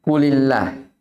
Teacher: Dia dibaca tipis karena sebelumnya ada lam yang berkasrah.